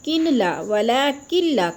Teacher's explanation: الا انہم هم السفہاء ولکن لا يعلمون، ولیکن لا یعلمون، ولیکن نہیں پڑھنا، اکثر مسٹیک کر جاتے ہیں، کن لا، ولیکن لا، کاف کو لام کے ساتھ ملا کر مدغم کرنا ہے، یعنی ملانا ہے، اور لا کو بھی کھینچنا ہے، تھوڑا سا الف مدہ ہے، یعلمو کو بھی کھینچنا ہے۔